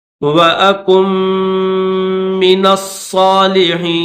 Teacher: یہ کاف ہے، اس کاف کو میم کے ساتھ ملائیں گے، کاف کے بعد نون کی آواز نہیں نکالیں گے، کاف کے بعد ڈائریکٹ میم کو پڑھیں گے